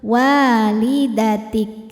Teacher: di kaf ada sifat syiddahnya, kuat suaranya ya. Dan ada anginnya, angin keluar belakangan untuk kaf yang sukun.